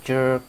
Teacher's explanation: Jerk thì cái chữ cong lưỡi nó nhiều hơn